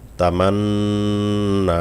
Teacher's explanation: এখানে ওয়াজিব গুন্না রয়েছে আবার এক টানও রয়েছে।